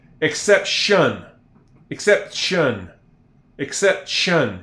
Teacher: Shun. Almost like the T is a sh